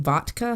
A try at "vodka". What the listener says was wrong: Sounds like you're saying it with a T.